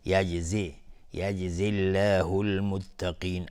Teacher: لفظ جلاله ترقیق میشه، اینجا نازک تلفظ میشه چون قبلش کسره اومده